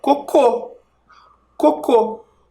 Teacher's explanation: o som mais forte está na última sílaba Então ela é uma oxítona então a palavra coco com acento